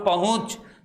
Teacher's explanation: देखिए नाक के साथ साथ ध्वनि कहाँ निकलेगी, मुख से भी निकलेगी। भले हूँ में छोटा ऊ आ रहा है, लेकिन फिर भी मुझे क्या लगाना पड़ा, अर्धचंद्र बिंदु।